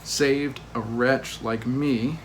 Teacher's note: saved wretch and me are the stresses the others are slack